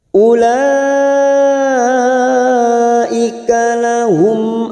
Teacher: Ula ada mat yang bertemu dengan hamzah dalam satu kalimat, mat wajib mutasil 4 harokat kita panjangkan